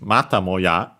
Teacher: accent on the ta, so low, high, and everything else low